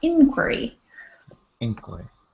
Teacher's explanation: So the accent is on the I, inquiry.